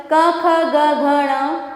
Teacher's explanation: कवर्ग हमारे कंठस्थ से होकर निकलते हैं